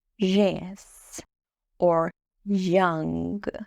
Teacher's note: There’s like a mixture of /j/ and /dʒ/ sound.